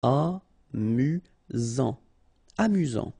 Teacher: Final T not pronounced. You've got only one S here between the vowels, so it's really this Z sound. Amusant. Amusant.